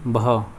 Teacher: हिंदी की स्पर्श घोष महाप्राण ओष्ठ व्यंजन ध्वनि है, तो वह है बह।